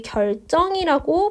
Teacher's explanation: 앞에 있는 리을의 영향을 받아서 정이 쩡이 된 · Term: 된소리 되기